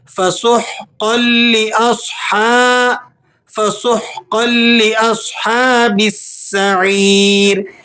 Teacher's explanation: ہا کی آواز آپ نے مکمل مخرج سے نکالنی ہے. فسحقا قاف کو آپ موٹا پڑھیں گے اور لام مشدد ہے، اسے سختی سے بھی ادا کریں گے. · سین حروف صفیریہ میں سے ہے، یہاں آپ نے سیٹی بھی نکالنی ہے، اور یہ یا مدہ ہے، اسے آپ نے 1-2 سیکنڈ تک کھینچ بھی لینا ہے.